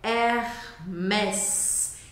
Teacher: O H no começo das palavras em francês não é pronunciado, tá? A gente vê de novo aquele E com acento como se fosse uma crase, que é o som de E.